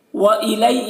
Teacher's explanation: یہاں پر یا لین ہے، اسے جلد پڑھنا ہے